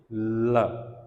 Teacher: it is going through the sides of your mouth